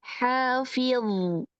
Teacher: karena dia adalah huruf tebal, jadi ketika diwakafkan tetap harus terasa itbaqnya.